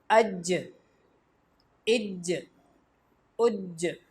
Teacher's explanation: جیم بھی حروف قلقلہ میں سے ہے، اس کو ہلا کر پڑھیں گے